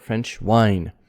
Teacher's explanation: again french not frenchy but french tongue curled up french wine and main stress on wine